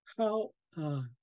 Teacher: really sing songy because you'll hear our pitch rise and fall rise and fall